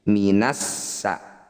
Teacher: Alif Lam diikuti tasdid ini disebut bacaan Idam Syamsiah cara bacanya Alif dan lamnya abaikan tidak usah dibaca langsung masuk pada huruf yang bertanda tasdid